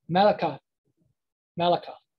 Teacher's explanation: the sound at the end becomes soft and almost you can't even hear it sometimes